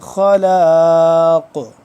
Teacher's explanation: खलाक आखिर में कलकला हो रहा है जब वफ होगा